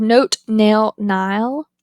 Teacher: The n is voiced, but it's alveolar in its place of articulation.